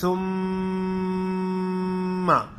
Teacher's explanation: میم کے مخرج ہے ہونٹ، ہونٹوں سے ادا ہوتی ہے، ہونٹ آپس میں ملتے ہیں تو میم، میم جب ادائیگی ایسے ثم، سختی سے ہونٹ بند ہوں گے، جب ہونٹ جدا ہوں گے تو بس میم ادا ہو گئی ہے، باقی اس کی آواز کو جاری نہیں رکھنا، کیونکہ جاری اگر رکھا گیا تو پھر الف مدہ پیدا ہوتا ہے، لمبا نہیں کرنا۔